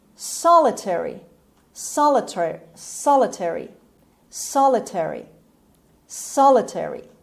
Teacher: The stress is on the first syllable on S sound. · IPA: /ˈsɑːləteri/